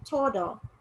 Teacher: If you pronounce the D like a regular D, it can sometimes sound like the Spanish R.